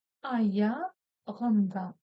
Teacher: Снова буква У, которая читается очень-очень кратко. Ударение на последний слог.